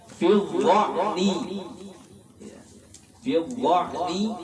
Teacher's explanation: Kita tahu makhraj huruf dha di ujung lidah, ya, dengan gigi seri